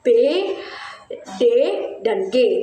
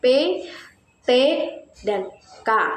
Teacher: bunyi bersuara, yaitu bunyi yang membuat pita suara bergetar